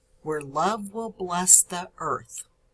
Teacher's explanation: will is unstressed bless is stressed the earth the is unstressed and earth is stressed · where is an unstressed syllable the stress falls on love · Will bless, so will is unstressed, bless is stressed.